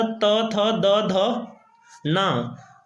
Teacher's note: इसमें जीभ है वो दांतों को टच करती है। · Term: दंतस्य